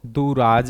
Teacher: दोस्तों यहां पर दूह प्लस राज, तो यहां पर भी क्या हो जाएगा, विसर्ग से पहले छोटा ऊ है, विसर्ग के बाद जो है र आ रहा है, तो ये छोटा ऊ बड़ा ऊ में बदल जाएगा